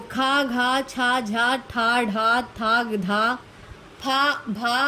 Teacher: जिन वर्णों का उच्चारण करते समय मुख से अधिक श्वास निकलती है उसे हम महाप्राण कहते हैं। वर्गों का दूसरा और चौथा वर्ण महाप्राण होता है, साथ में ऊष्म व्यंजन भी महाप्राण होते हैं।